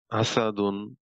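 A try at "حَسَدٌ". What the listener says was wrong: হার উচ্চারণটা আরেকটু।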